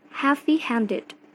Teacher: primary stress is on the second word and secondary stress is on the first word.